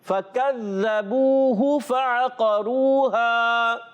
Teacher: ذال کی بجائے زا کی آواز، فکذبو، ایسے نہیں پڑھنا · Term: ذال کی ادائیگی